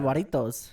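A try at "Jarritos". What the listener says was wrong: There's no U though. H-A. I mean J-A, so it's just the same sound.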